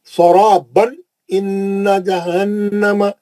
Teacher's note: تنوین کے بعد اظہار حلقی کا حرف حمزہ ہے, جلدی پڑھیں گے.